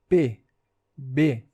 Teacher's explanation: O som de P e B, por exemplo, é formado pela união dos lábios